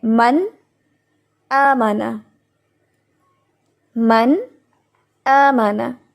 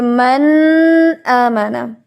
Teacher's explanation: جب ہم نے من کیا تو ہم نے اس کو ناک میں آواز کو زیادہ ٹھہرانا نہیں ہے کہ من آمانا، یہ غنہ بن جائے گا. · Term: اظہار